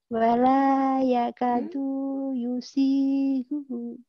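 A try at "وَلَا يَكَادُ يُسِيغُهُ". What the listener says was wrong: Belum ya, jadi yang panjang laka sama si sama hu.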